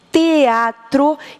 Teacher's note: Quando eu digo teatro, eu faço aqui, ó, coloco a língua encostadinha nos dentes para fazer o T